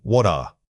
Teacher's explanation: Say it again, what are. The T in what and the following vowel must link together. The transition should incorporate a soft, audible flow of air.